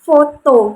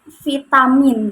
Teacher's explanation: foto ini termasuk dalam kata tak bersuara, sedangkan vitamin termasuk pada kata bersuara